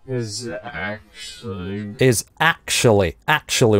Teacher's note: actually у него с твердым приступом